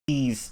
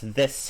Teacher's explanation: these, it has a Z sound at the end, whereas this has an S sound. So not this, no, this, and not these, no, these.